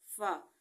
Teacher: फा हमारे ऊपर वाले 2 दांत नीचे वाले होंठ के गीले हिस्से से लगते हैं तो फा अदा होता है